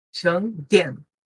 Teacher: E tem que fechar o N com a língua, ó.